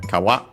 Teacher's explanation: It's an accent on the last syllable